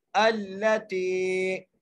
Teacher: ता को हम खींच के पढ़ेंगे क्योंकि यहाँ पर मद्दा आ गई है, याई मद्दा आ गई है, इसलिए हम ता को खींच के पढ़ेंगे अल्लती तत्क़ालिउ।